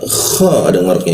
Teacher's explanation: Kha di mana? Di atas jakun dia. Kha ada ngoroknya digigit seperti itu.